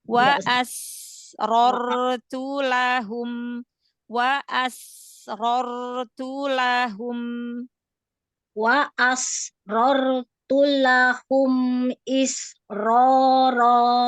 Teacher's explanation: isroro I sudah lebih baik tapi jangan terputus masih alirkan aja ketemu dengan ro dia nafasnya masih mengalir suaranya masih mengalir